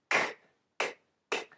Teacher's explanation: we have an aspirated K sound